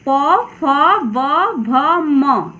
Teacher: इसे प वर्ग कहते हैं और इसका उच्चारण स्थान होष्ठ है, यानी होठ।